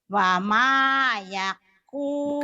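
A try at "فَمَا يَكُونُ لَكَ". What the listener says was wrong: bukan wa tapi fa. Fama Ustazah. Nolaka. Fama yakunu laka.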